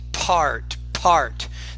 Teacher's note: you need to produce those with more air so I don't confuse them with D's or B's